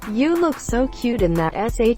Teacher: elongating the last syllable of every sentence